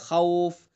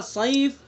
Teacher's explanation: واو حرف لین کے بعد سکون وقف کی وجہ سے آیا، تو اس لیے مد لین عارض وقفی ہوگا۔ اسی طرح سے دوسری مثال صیف، صیفن، یا اس کے اندر حرف لین ہے اور اس کے بعد فا متحرک ہے، لیکن ہم نے وقف کیا صیف تو وقف کی وجہ سے فا ساکن ہو گیا۔